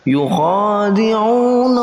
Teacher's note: Ada kha yang berharakat fathah dan mempunyai huruf, dan ada alif yang tersembunyi maka digantikan dengan alif tegak, dibaca dua harakat panjangnya